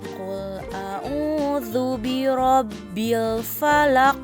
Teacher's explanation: Jika huruf qaf disukunkan, maka cara bacanya harus dipantulkan karena termasuk huruf qalqalah.